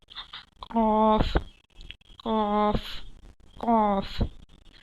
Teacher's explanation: क़ाफ़ comes out from the root of the tongue and the soft palate · तो उसको हमें ऊपर के ताल्लुक से लगाना है। जब हम क़ाफ़ की अदाई करते हैं तो ज़बान की जड़ ऊपर के तालु से लगाएं। तो जैसा हम पढ़ेंगे क़ाफ़ तो आपको खुद महसूस होगा कि वो ऊपर के तालु से लग रही है।